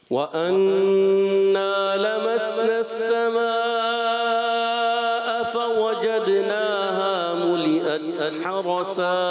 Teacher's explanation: ایک تو آپ نے مد کو پورا کرنا ہے اور فَوَجَدْنَاهَا دال میں کلکلا کرنا ہے